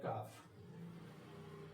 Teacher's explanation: کاف حلق کے تھوڑا سا آگے والے حصے سے ادنائے حلق، حلق کا جو ابتدائی حصہ ہوتا ہے وہاں سے نکلتا ہے کاف